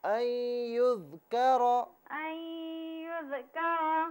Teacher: اس میں کاف کو باریک پڑھیں، را کو پر کر کے پڑھیں